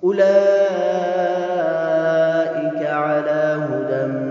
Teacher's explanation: اولئک میں جو مد ہے یہ مد واجب ہے، 5 حرکات کی مقدار اس کو لمبا کر کے پڑھنا ہے